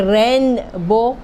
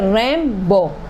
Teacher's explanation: نون کے بعد بے آیا تو خود ہی خود ہمارے منہ سے میم بن جائے گا، اسی وجہ سے ہم بولتے ہیں ریم بو۔ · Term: قلب